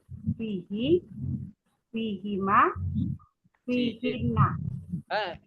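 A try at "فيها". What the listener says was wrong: Enggak Bu. Bukan seperti itu. Kalau ha-nya tetap ha Bu. Fiha. Ibu yang salah tadi hanya di fiha-nya saja.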